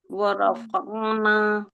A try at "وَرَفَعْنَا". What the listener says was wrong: ورفعنا غلط ہو جائے گا. ورفع فع فع. ورفعنا نہیں ہے یہ، فا عین زبر فع فع فع. ہاں، رفع فع کو کھینچنا نہیں ہے، عین کو نکالنا ہے.